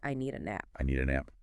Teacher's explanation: The N sound at the end of need often links to the A, so it sounds like I need a nap. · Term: linking sounds